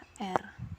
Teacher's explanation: konsonan getar apiko alveolar terjadi bila artikulator aktifnya yang menyebabkan proses penggentar ialah ujung lidah dan artikulator pasifnya ialah gusi